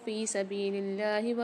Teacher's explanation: فی سبیل اللہ میں اللہ کے لام کو باریک پڑھیں گے کیونکہ اس سے پہلے زیر آ رہی ہے